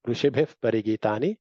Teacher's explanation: ಇಲ್ಲಿ ಋಷಿಭಿಃ ಮುಂದೆ ಪಾ ಇದೆ, ವಿಸರ್ಗ ಇರೋದ್ರಿಂದ ಅಲ್ಲಿ ಫಕಾರವನ್ನ ಉಚ್ಚಾರಣೆ ಮಾಡಬೇಕು.